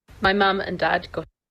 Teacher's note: she connects my mum and Dad and then there's a really short pause there between my mum and dad